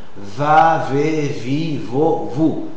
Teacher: c'est une consonne labiodontale, fricative, sonore et orale. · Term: consonne V